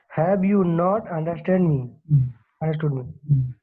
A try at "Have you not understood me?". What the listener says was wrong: So question को question के level में पूछिए, मतलब question के tone में बात कीजिए। Have you not understood me? Have you not understood me? So this is the way we speak, you know. Have you not understood me?